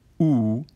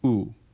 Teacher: For example, for cardinal vowel number 8, oo, we can put the plus symbol underneath it as a diacritic to indicate that it is slightly fronter, oo. This diacritic can then be used for any vowel that isn't already maximally front to indicate that it has a slightly fronter articulation than its official IPA definition.